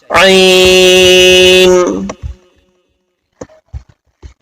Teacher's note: اب یہاں پر بھی پھر حروف حلقی کا عین آیا ہے، تو عین کو اس طریقے سے آپ ادا کیجئے. درمیانی حلق سے عین کی آواز ہماری نکلنی چاہیے